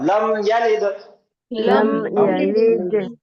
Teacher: फिर यहाँ पे दाल पे कलकला होगा।